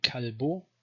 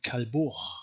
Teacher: either a stop, k, or this fricative ch after vowels